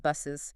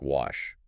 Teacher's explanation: So to make the plural or possessive clear and audible, we have to add that little extra vowel sound again. It's often the schwa, making it buses. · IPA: /ɪz/